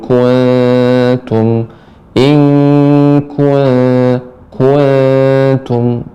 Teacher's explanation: nun dibaca dengan samar, tidak dilengketkan